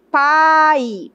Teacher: Então, veja que o A é a vogal e o I é a semivogal. · O a, pa, porque a mais forte, é mais tônica. E a menos tônica, a menos forte é o i.